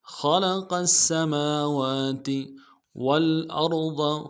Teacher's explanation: خلق السماوات والارض، واو کو لام کے ساتھ ملانا ہے، لام ساکن غنہ نہیں ہوگا، حمزہ کو را کے ساتھ ملانا ہے، را کو موٹا ادا کریں گے، ضاد کو موٹا ادا کریں گے